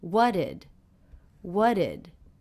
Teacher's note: I noticed first of all that I've dropped the T here